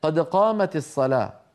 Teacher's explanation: هذه دال ساكنة، ما يجوز لك أن تكسرها لا في الأذان ولا في القرآن